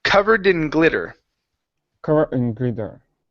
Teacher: we need to cut off this D at the end and connect it to the word in.